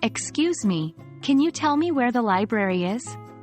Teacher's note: Let's consider the question, "Excuse me, can you tell me where the library is?" Here, library is stressed because it's the key piece of information we want.